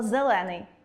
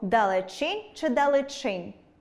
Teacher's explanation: Ненаголошений звук [е] наближається у вимові до [и], звук [и] наближається у вимові до [е] , а звук [о] в деяких випадках наближається у вимові до [у] Складно?